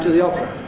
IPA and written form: t.ə ð.i ɒ.p.r.ə (to the opera)